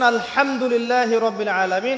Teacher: এই হা এর মাখরাজ কোথায়? হা এর মাখরাজ কোথায় বলেন একজন? কণ্ঠনালীর মাঝখান থেকে।